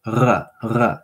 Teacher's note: it's a throat trill kind of like Chewbacca